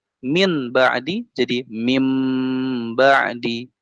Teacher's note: kalau nun sukun jumpa ba oh malah jadi huruf mim